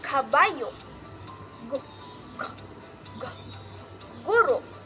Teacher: Pang-apat, ito ay pangalangala o viral. Ito ay ang ibabaw ng punong dila ay dumidikit sa velo